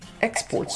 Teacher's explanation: when it's a noun the stress is on the first syllable